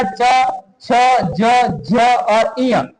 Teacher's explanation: जिन व्यंजनों के उच्चारण में जिह्वा का अग्रभाग कठोर तालु को स्पर्श करता है वे तालव्य व्यंजन कहलाते हैं